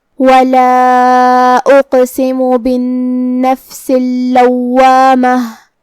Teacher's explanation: کلمت اللوامہ میں لام پہ تشدید ہے اور واو پہ تشدید ہے تو ہم یہ دونوں تشدید کو ظاہر کریں گے